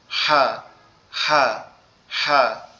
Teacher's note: আওয়াজটা একটু গলা চেপে হবে